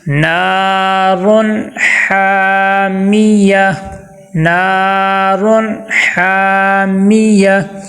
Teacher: نون کے ساتھ الف ہے، نون کو ایک الف کے برابر ہم نے لمبا کیا ہے